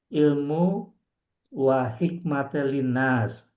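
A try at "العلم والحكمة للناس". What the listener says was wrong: Ilmu hikmatan. Nggak pakai wow.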